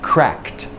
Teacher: an unvoiced K is followed by T